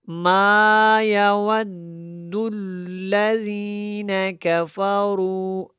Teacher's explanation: یا کے اوپر زبر پڑا، واو کو دال کے ساتھ ملایا ہے اور دال کو پھر لام کے ساتھ ملانا ہے، کیونکہ واو جب دال کے ساتھ ملے گا پھر دال لام کے ساتھ ملے گا تو یہ شدات کی وجہ سے ہے، تو ان کو بڑے پختگی کے ساتھ ادا کرنا ہے اور میم الف زبر ما کو تھوڑا الف مدہ کی وجہ سے لمبا کرنا ہے۔ ما یود الذین کفروا، یہاں پہ رو جو ہے یہ را موٹا ہے۔